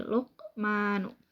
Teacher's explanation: Karena huruf qalqalah qaf disukun dan posisinya di tengah kalimat. Nah, cara membacanya itu dipantulkan dengan ringan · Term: qalqalah sugro